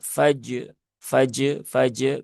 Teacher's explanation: Maka r-nya dibaca dengan tebal. Jadi jimnya memiliki sifat syiddah, rnya rakhawah.